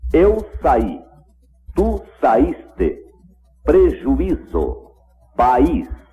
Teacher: O I dessas palavras é pronunciado separado da vogal que o antecede.